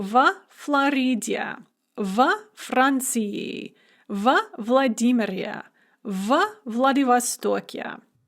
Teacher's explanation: We're going to pronounce it va because it's never stressed, but it's spelled vo.